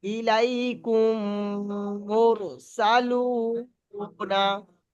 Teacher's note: প্রথম মিমটাকে দ্বিতীয় মিমের সঙ্গে মিলিয়ে একালিপ গুণনা করে পড়তে হবে।